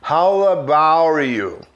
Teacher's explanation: Eu posso juntar esse T do about com you e ficar com som parecendo R. How, enrolando a língua um pouquinho para trás, how about you?